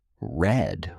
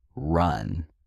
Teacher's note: Another sound that learners often find difficult is the R sound, especially if your native language doesn't have a similar sound. The English ER is pronounced by curling the tongue slightly back in your mouth without touching the roof